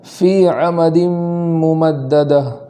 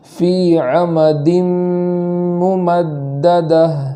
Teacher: فی میں ایک الف کے برابر یا مدہ ہونے کی وجہ سے تاخیر کریں گے